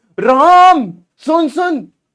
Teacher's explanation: राम खींच के बोल रहे तो यह प्लुत स्वर